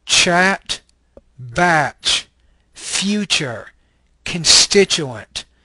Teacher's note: This is a palatal, affricate, voiceless consonant.